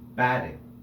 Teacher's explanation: The first syllable bat is said more loudly than the second syllable, ting. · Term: accented syllable